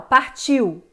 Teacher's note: O som mais nítido é o I, por isso que o I aqui vai ser o Vzão e o U, Vzinho.